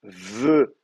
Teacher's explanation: une labiodentale avec la lèvre sur les dents